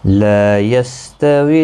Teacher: لا الف مدہ ہے، ایک الف کی مقدار کے برابر کھینچ کر پڑھیں گے۔ یستویل کسی بھی حرکت والے حرف کو کھینچنا نہیں۔